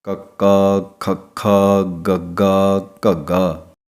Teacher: ਇਹਨਾਂ ਨੂੰ ਬੋਲਣ ਲੱਗਿਆਂ ਆਪ ਜੀ ਨੋਟ ਕਰੋ, ਇਹਨਾਂ ਦੀ ਆਵਾਜ਼ ਨਿਕਲਦੀ ਹੈ ਗਲੇ ਦੇ ਵਿੱਚੋਂ